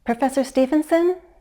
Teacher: I used rising intonation. I sound uncertain, maybe hesitant.